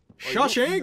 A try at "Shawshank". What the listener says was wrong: I was about to say, you actually pronounced that way. I've never actually heard anyone say it that way. How he said it. He put such an emphasis on the SH.